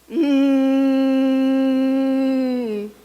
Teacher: o som do M, ele é nasal, porque o nariz, ele vibra. E ele é bilabial porque os lábios se juntam. E ele é sonoro porque emite um som.